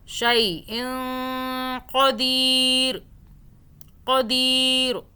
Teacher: اس نون کے، اس یہاں پہ چھپے ہوئے نون کو آپ نے، نون ساکن کو جو ہے یہاں پہ آپ نے 2 سیکنڈ کے لیے چھپا کر ہولڈ رکھنا ہے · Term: اخفاء